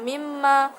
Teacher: bacaan idgham bighunah karena nun sukun bertemu dengan mim